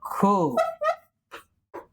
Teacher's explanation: महाप्राण वर्ण म्हणजे काय, ज्याचा उच्चार करताना ज्याच्यामध्ये ह मिसळला जातो. ज्या व्यंजनामध्ये ह हे व्यंजन मिसळलं जाईल बोलताना, उच्चारताना ते आपलं महाप्राण असतं.